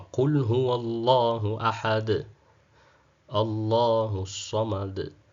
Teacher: unaona dali hapo mwisho inakuwa na mwangwi herufi inajirudia rudia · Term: kalqala